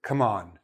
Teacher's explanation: I'm stressing the second syllable; not the verb. I'm stressing the preposition.